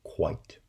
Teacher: If the segment occurs between a S and a N, two segments with lower sonority, like the word soon, well, then the segment is pronounced as the high back vowel. If it occurs before a sonority peak, as it does in the word quite, then it's pronounced as the glide, w, quite. Because the following segment, a, in the diphthong I, is a low central pronunciation, which has greater sonority.